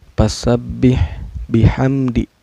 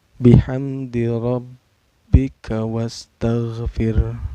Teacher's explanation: Karena ada mim sukun bertemu dengan huruf izhar syafawi yaitu dal ya. Cara bacanya mim sukunnya dibaca secara jelas, gak boleh dengung dan gak boleh memantul.